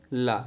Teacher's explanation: जब आप बोलते हैं तो जीभ जो है मुड़ जाती है और उसमें जो हवा होती है वो जीभ के बगल से निकलने लगती है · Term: पार्श्विक व्यंजन